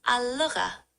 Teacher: The G sound in lugha is a bit different from English. It's a voiced sound made with the back of the tongue, similar to the French R.